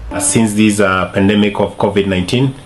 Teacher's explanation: 19, he pronounced it flat at the end with I sound instead of E sound